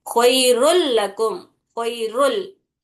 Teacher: तो ख्वाइरुन है ये, ख्वाइरुन अगर ऐसा लिखी मैं तहरीर में, तो ख्वाइरुन लकुम दूसरा कलीमा है। तो यहाँ पर नून जो दिख रहा, वो लाम में पूरी तरीके से मिल जाता, साकिन नून जो तनवीन में है। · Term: इदगाम बिला गुन्ना